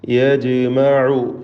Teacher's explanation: ജീമിൻ്റെ സുക്കൂൻ ഖൽഖല സുഗ്റ നൽകി ശബ്ദം ചലിപ്പിച്ച് ഹറക്കത്ത് പോലെ വ്യക്തമാക്കണം.